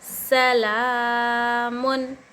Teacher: सीन पर हरकत ज़बर ज़रा भी नहीं खींचना चाहिए। · लाम पर खड़ा ज़बर एक अलिफ के मकदार खींचना चाहिए। खड़ा ज़बर हुर्फ मद्दा के बराबर होता है, अलिफ मद्दा के बराबर होता है।